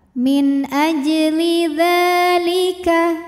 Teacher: hukumnya adalah Mad Thobi'i muqadar karena dalal barisnya fathah berdiri maka dalal ini kita panjangkan dua harakat